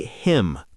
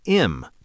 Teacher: It often sounds like im because the H gets dropped. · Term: connected speech